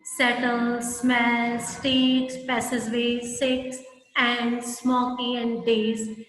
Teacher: a repeated S sound in the word settles, smells, streets, passageways, six, and smoky and days, which create a sibilant hissing sound